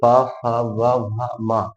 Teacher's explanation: पा फा वा भा मा, जो सभी के सभी कहाँ से होती है, ओष्ठ से होती है